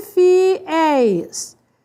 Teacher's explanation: É o E seguido de S. É ditongo, é tônico, é aberto. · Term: ditongo aberto